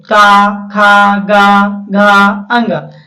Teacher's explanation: तो जो कंठ से आवाज निकलता है वो का वर्ग होता है